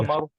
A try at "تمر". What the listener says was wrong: Not tamar. No. Tamr. The meme has a sukun on it.